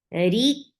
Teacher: Reek for kasra give e sound and ra is light. Whenever ra is with kasra, it is light.